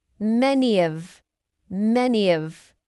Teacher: Then we have a linking Y sound between many and of.